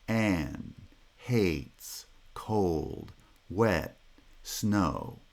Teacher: each one has falling pitch across the length of the syllable because each one is a monosyllabic foot